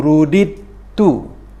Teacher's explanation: Bunyi dal ini, dal yang pertama ini kosong, bermaksud di situ menerima tanda mati. Bunyinya dimasukkan ke dalam bunyi ta, ya, dan kita dipandukan dengan adanya tanda sabdu. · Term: idgham